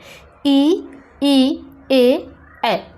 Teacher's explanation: इनका जब हम उच्चारण करेंगे तो हमारी जो जीभ है वह दांत के निचले हिस्से में जाकर के स्पर्श करती है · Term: अग्र स्वर